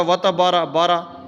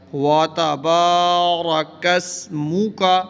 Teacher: جب بھی زبر کے بعد الف آ جائے تو الف مدہ ہوتا ہے، اس کو لمبا کرتے ہیں، تو با کو ہم نے لمبا کرنا ہے اس الف کی وجہ سے۔